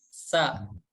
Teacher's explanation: Kemudian ada huruf sin seperti huruf S saja ya mudahnya, dan tempat keluarnya dari huruf sin ini yaitu ujung lidah kita menempel ke ujung gigi seri yang bawah